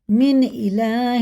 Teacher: یہ اظہار کا قاعدہ، جیسا لکھا ویسے ہی پڑھیں گے، نون ساکن کے بعد الف آ رہا ہے تو یہ حرف حلقی میں سے ہے، جیسا لکھا ویسے ہی پڑھیں گے۔